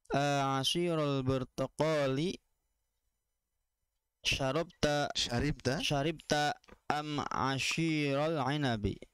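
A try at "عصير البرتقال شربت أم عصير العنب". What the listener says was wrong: Makanya sod ya, asir. Iya, bukan ashir. Iya, asir pakai sod.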